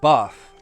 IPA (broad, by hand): bɑːθ